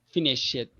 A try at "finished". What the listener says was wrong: and then add like a T. So finish.